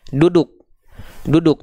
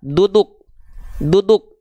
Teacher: ujung lidah ke langit-langit bukan ke Pangkal gigi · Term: D alfabet